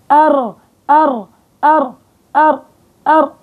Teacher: بيرتعد طرف اللسان عند النطق بالحرف وهو الراء. طبعا وأخفي تكريرا إذا تشددوا. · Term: التكرير